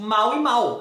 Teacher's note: no português, se uma coisa termina em L ou termina em U, a gente pronuncia do mesmo jeito, tipo mal e mal.